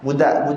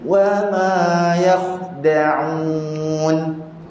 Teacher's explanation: Dia sebut macam budak, budu. Kita nak huruf dal kita macam kita nak sebut huruf ta, iaitu lidah kita letak dekat belakang gigi atas. Jadi kita sebut budak.